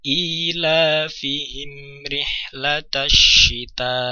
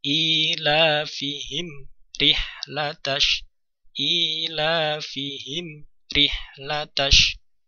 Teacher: Tidak ada jeda, tapi baca dengan mengalir, namun mem sukun terbaca dengan jelas. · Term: idhar syafawi